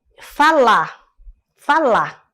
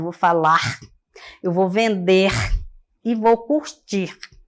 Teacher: a queda do R final dos verbos muito comum na língua oral no português por exemplo eh falar Falar como se não tivesse